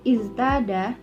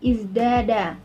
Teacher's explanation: Contoh yaitu iztada yang berubah menjadi izdada, yang mana zai telah mempengaruhi huruf ta dan berubahlah huruf ta tersebut menjadi huruf dal untuk menyerupai huruf zai pada sifat yang jelas atau keras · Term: asimilasi progresif